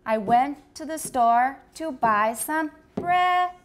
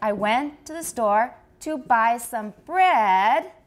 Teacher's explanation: 后面还要讲别的话的话, we go high, if we're finished, we go down. But if we're not finished, we start high, go down, and then come up a little bit with a continuation rise